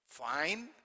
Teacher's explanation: Falling pitch, fine. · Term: falling tone